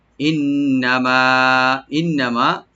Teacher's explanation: ইন হামজাকে right দিবেন, আর নুনটাকে double করে ওয়াজিব গুন্না, এখানে একালিফ পরিমাণ গুন্না করব আমরা, টানবো না। মা একালিফ টানবেন ওপেন করে।